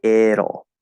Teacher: when we contract it and will, we get it'll. And this is a flap to D. · And we're going to flap that D into O, which you could describe a number of different ways. I would simply describe it as going straight into the half L itself, the dark L sound